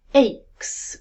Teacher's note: it starts with a long vowel as in say